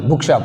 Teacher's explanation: Book shop we have stress on first syllable. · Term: compound word